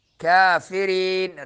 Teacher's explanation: را باریک ہوگا اور یہ مدہ ہوگا